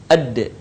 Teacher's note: lidah kita ke gusi bagian atas sebagaimana kita melafalkan huruf ta di dalam keadaan mati huruf da terdengar suaranya memantul